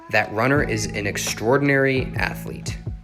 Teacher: I pronounced it more like extra with only 5 syllables, but you can also pronounce it extraordinary with 6 syllables.